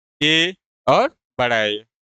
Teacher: कंठ तालव्य स्वर जो कि कंठ और तालु को मिलाकर जिसका उच्चारण होता है